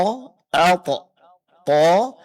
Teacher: huruf th pengucapannya ya disertai dengan terangkatnya pangkal lidah ke langit-langit sehingga bunyi daripada huruf tha itu tebal